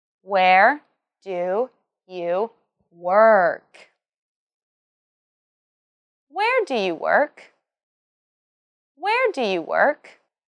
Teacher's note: where do you work remember to emphasize where and work also this is a wh question so it has a falling tone at the end